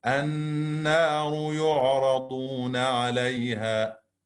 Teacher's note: the letter Noon that emerge from the tip of the tongue with what lies opposite of the gums that lies behind the two top front teeth